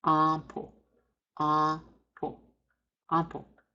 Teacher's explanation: Before P and B, nasalization is written as the letter M. We nasalize the A, and when we put our lips together to give the P sound, it's when you go and hear the sound of M come through. We don't pronounce the M. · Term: nasal A